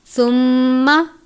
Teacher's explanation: میم مشدد پر ہمیشہ غنہ کرتے ہیں، غنہ کی مقدار 1 الف کے برابر ہے۔